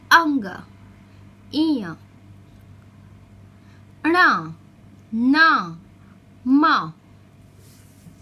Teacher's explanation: दूसरा प्रकार है नासिकीय व्यंजन। इन व्यंजनों के उच्चारण में वायु मुख और नाक दोनों से बाहर निकलती है।